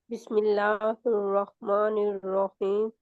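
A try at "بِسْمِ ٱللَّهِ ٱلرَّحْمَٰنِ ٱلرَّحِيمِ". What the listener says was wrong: नून मोटा नहीं है। बिस्मिल्लाहिर, ही भी मोटा नहीं है। हिर रहमा हिर निर्रहीम, निर्रहीम। आपकी रा जो है ना, उसमें कोई नकली मोटापन है। नकली तरीके से आप मोटे कर रहे हैं, उसको पहचान मुझे आ रही है कि आप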